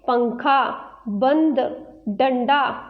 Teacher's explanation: अंग का चिन्ह बिंदु है, इसे अनुस्वार कहते हैं। इसे नाक की सहायता से बोला जाता है